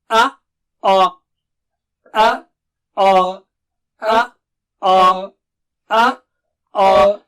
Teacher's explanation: دیکھیے منہ بالکل گول نہیں ہو رہا اس میں، اور کرنا بھی نہیں چاہیے. آئینہ رکھیے سامنے اور دیکھیے منہ گول تو نہیں ہو رہا ہے. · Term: موٹا بولنا